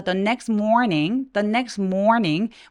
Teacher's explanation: 자음이 이렇게 세 개 뭉쳐 있을 경우엔 중간에 티 발음을 삭제하는 경우가 많습니다